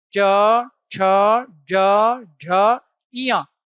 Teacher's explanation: क्यों कह रहे हैं इनको स्पर्श संघर्षी? क्योंकि इनमें जीभ स्पर्श करती है और साथ ही साथ घर्षण होता है।